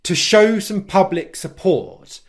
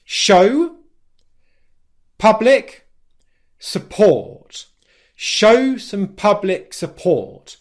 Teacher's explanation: how he stressed three words show public support show some public support he stressed the stressed syllables in those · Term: english stress